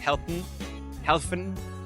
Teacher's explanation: German you would say more like Heen Heen and this Heen you can hear more n but you don't hear the vowel